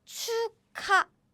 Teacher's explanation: So it's chuk, ha, and these two sounds are combined. And what happens? They become k sound. So we read it as 축하.